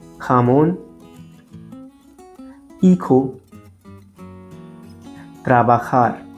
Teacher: In Spanish, jota is pronounced from the throat, a rough h sound.